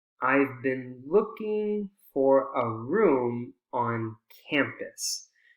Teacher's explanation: the ing is the unstressed syllable it's still part of the content word looking